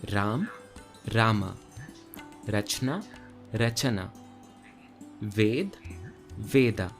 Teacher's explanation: Notice how Sanskrit adds an A sound to the end of each letter, while Hindi does not. Almost like there is a halant on the end of each letter. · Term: Shwa